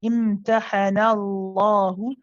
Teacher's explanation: The lam here in the name of Allah is heavy. because it has a fatha before it, okay? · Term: heavy lam